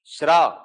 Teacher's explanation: श उच्चारित होता है तालु से, र उच्चारित होता है मूर्धा से, तालव्य मूर्धन्य ध्वनि है श्र